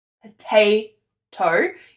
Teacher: Iamb is when you have an unstressed syllable and a stressed syllable. So potato, you can hear that te is a stressed syllable.